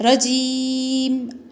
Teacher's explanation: تو زیر کیا کر دیا؟ وقف کرنے کی وجہ سے زیر کو گرا دیا، تو خالی میم۔